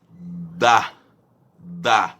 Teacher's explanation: A língua encosta o pezinho do dente. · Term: linguodentais